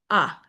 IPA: ə